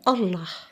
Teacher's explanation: La lettre Elif se prononce comme une voyelle ouverte